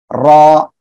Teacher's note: ওকে, এই যে অক্ষরটা, এ অক্ষরটা উচ্চারণ হবে জিব্বার আগার পিঠ, এই যে জিব্বার আগার পিঠ, তারপর আবার উপরে তালুর সঙ্গে লাগিয়ে র, এরকম মোটা আওয়াজে উচ্চারণ হবে। র এ অক্ষরে একালি টেনে পড়তে হবে।